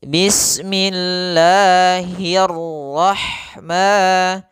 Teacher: Huruf 'ha' juga harus ringan. Jangan sampai masuk ke hidung. Jangan bilang 'hai', tapi 'bismillahirrahman '.